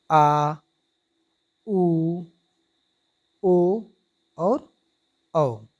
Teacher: जिन स्वरों के उच्चारण में जीभ का पिछला भाग सामान्य स्थिति से उठता है उसे पश्च स्वर कहते हैं।